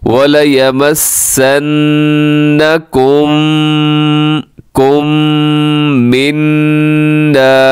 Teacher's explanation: मीम साकिन है और फिर मीम मुतहरिक आ गई है तो यहाँ पर भी मीम साकिन का इदगाम होगा, इसे कहा जाता है इदगाम में शफ़वी।